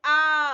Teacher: लेकिन आ बोलने से पूरा क्या हो रहा है? पूरा मुंह खुल रहा है।